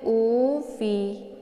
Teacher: ini dinamakan dengan Mad Thobi'i dibacanya panjang 2 harokat saja